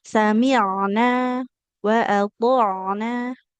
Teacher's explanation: Huruf ain ini kan dia makrotnya di tengah tenggorokan kita ya. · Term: huruf ain sukun